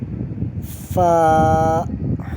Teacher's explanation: حروف شفویہ اوپر کے دانتوں کے کنارے اور نچلے ہونٹ کے تر حصے سے ادا ہوتا ہے